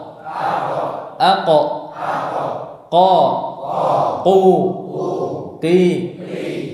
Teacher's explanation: Makhraj yang kelima adalah pangkal lidah bertemu dengan langit-langit lunak. Itu makhrajnya huruf qaf.